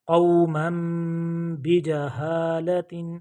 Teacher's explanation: اگر نون ساکن تنوین کے بعد با آ جائے تو وہ نون ساکن اور نون تنوین اس کی جو وائس ہے، اس کی آواز ہے، وہ میم سے بدل جائے گی. اور چھوٹا سا اوپر میم بھی لکھا ہوتا ہے، دیکھیں ابھی یہ نون تنوین ہے اور اس کے بعد یہ بجہالت با آ گیا تو یہاں پہ اس کی آواز میم میں کنورٹ ہو گئی ہے، بدل گئی ہے.